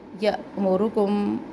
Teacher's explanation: اب یہاں پہ یا میں جھٹکا دینا ہے کیونکہ یہاں پہ یہ الف نہیں ہے، حمزہ ہے، اس کے اوپر ساکن ہے.